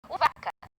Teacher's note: O vaca não faz ventinho. É o mesmo ponto, a mesma articulação.